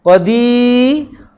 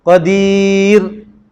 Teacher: Yang ra tu lidah je naik. Bibir tak bergerak. Qadir. Baru nipis. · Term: Ra nipis